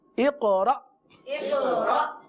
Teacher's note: اق پہ قلقلہ، را پہ کیا ہوا؟ حمزہ ساکنہ کا جھٹکا.